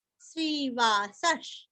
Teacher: श्रीवासश श्री दीर्घ वा के स के आगे विसर्ग का हल्का सा श